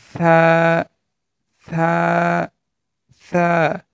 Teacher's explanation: হরফটি পাতলা হবে মানে হরফটি নরমভাবে উচ্চারণ করতে হবে